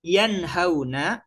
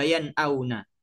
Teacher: Namun dua huruf ha dan a ini makhrajnya tempat keluarnya huruf ini ghairu mutaba'id, tidak saling berjauhan atau berdekatan karena sama-sama huruf halak, yaitu sama-sama makhrajnya ada di tenggorokan